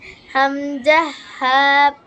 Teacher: হলকের শুরু হতে হামজা হা